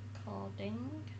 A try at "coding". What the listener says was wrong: Coding. Coding. You said codding.